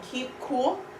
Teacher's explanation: The K in keep would be towards the middle and front, and cool was going to come back. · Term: the assimilation of K